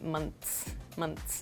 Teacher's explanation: so the th sound almost disappears it's sort of like when you're saying the or this or · So regarding your second question about the S sound, in a word like months, your tongue touches the back of your teeth and we make like a quick S sound